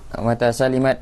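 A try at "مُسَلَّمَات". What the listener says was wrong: bukan mata salimat, mata sulimat. Mata sulimat bila disetujui.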